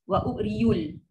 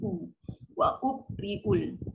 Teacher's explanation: Ni bukan y, bukan macam seorang macam yu. Dia adalah u saja. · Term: hamzah